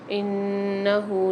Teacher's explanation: نون کے اوپر مشدد آ رہی ہے، یہاں پر غنہ کر کے پڑھیں گے۔ ہاں پہ الٹا پیش آ رہا ہے، 1 الف کی مقدار کھینچ کے پڑھیں گے۔